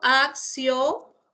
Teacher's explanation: El interdental, ¿cierto? El interdental Z, ¿cierto?